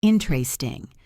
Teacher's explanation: Most Americans say interesting. They drop the first E. Interesting. 3 syllables instead of 4. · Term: syncope